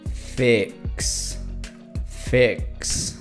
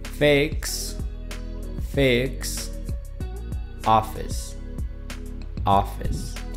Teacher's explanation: Cuando esta vocal está en una palabra o en una sílaba acentuada como fix, tiene una forma que va arriba y abajo, como ya hemos visto con otras vocales cuando están en una sílaba acentuada. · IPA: /ɪ/